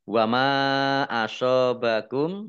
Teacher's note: Mad Jaiz munfasil dibaca panjang boleh lima boleh dua harakat · Wama asobakum mim fathah alif mat tobi'i, tetapi karena bertemu dengan huruf alif di kata yang berbeda, maka menjadi mat jaiz munfasil. Dibaca panjang boleh 5, boleh 2 harokat.